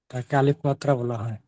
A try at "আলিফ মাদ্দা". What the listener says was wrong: মাত্রা নয়, আলিফ মাদ্দা। আলিফ মাদ্দা বলা হয়